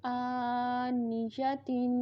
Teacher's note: حمزہ کھڑی زبر آ، نون زیر نی، آنی، یا زبر جا، آنیجا، تا دو زیر تین، آنیجاتین، آنیجاتین۔ آ کو لمبا کریں گے اور تا دو زیر تین اس کے اوپر غنہ کریں گے، تنوین ہے اس میں، آنیجاتین۔